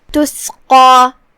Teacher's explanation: قاف کی ادائیگی زبان کے جڑ اور تالو کے نرم حصے سے ہے. قاف حروف تفخیم میں سے بھی ہے تو ہم قاف کو بھاری آواز میں ادا کریں گے · کلمت تسقى میں یہاں حرف القاف ہے. قاف کی ادائیگی زبان کے جڑ اور تالو کے نرم حصے سے ہے